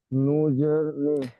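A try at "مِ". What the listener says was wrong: নুন নয়, মিম জের মি।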